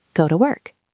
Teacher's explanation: Da, da, da. Go is strong. Work is strong. Ta is weak.